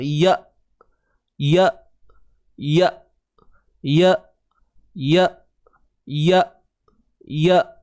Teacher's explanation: Jadi huruf hamzah ni dia ada sifat suara yang tertahan semestinya. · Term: sifat syiddah